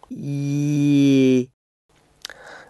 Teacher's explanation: Y, as in the first sound of yellow, is a voiced palatal approximant. Y. Note that the IPA symbol for the palatal approximant often has a different use in English spelling.